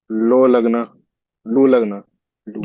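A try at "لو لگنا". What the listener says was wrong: जी, ठीक ठीक।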